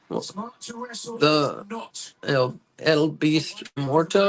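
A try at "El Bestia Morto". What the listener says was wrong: I don't think it's L. I think it's the. I understand that, but when they say his name, they don't say El Beast Morto. I think they say the Beast Morto.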